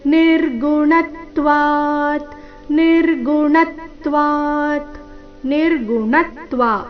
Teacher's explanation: ನಿರ್ಗುಣತ್ವ ಅಣ ಮೇಲೆ ಆಘಾತ